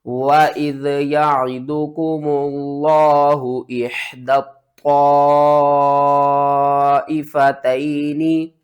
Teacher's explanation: हा को बारीक करेंगे और दाल को त्वा के साथ सख्ती से मिलाएंगे। त्वा को भी 2 बार पढ़ेंगे।